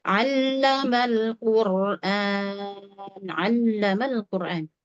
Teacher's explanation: Huruf lam bertasydid, lam sukun diperhatikan. Akan lebih lama ya. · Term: Huruf yang bertasydid